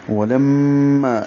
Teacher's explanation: یہ لم میں غنہ ہے، آواز ناک میں لے جائیں گے، 2 حرکات تک ٹھہرائیں گے. لما الف مدہ ہے، 2 حرکات لمبا کریں گے الف کے برابر.